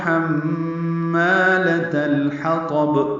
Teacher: ہا وسط حلق سے نکالیں گے، میم مشدد پہ غنہ ہے، ما الف مدہ ہے، 2 حرکات لمبا ہے.